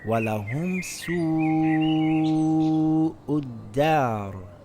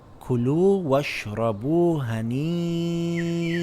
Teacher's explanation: We see a long vowel followed by a Hamza in the same word. We lengthen it for 5 counts.